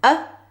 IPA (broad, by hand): ə